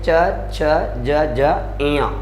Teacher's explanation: च वर्ग जो है इसका उच्चारण स्थान क्या माना गया है? तालु माना गया है